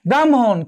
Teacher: আগে ম উচ্চারিত হয়েছে, তারপর কি হ উচ্চারিত হয়েছে।